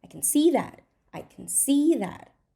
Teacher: we do not stress can we reduce it